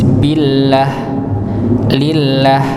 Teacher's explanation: jika lafaz Allah itu sebelumnya berharokat kasrah, maka dibaca tipis